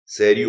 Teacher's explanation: eu passo a ter três sílabas em que a sílaba tônica é a antepenúltima, ou seja, essa palavra acaba caindo na regra dos proparoxítonos. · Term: proparoxítono eventual